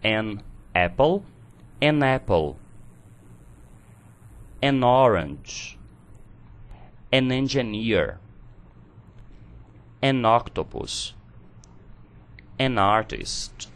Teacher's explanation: como o artigo indefinido an termina numa consonant e a palavra seguinte inicia em uma vowel, falando os dois juntos, nós podemos uni-los na pronúncia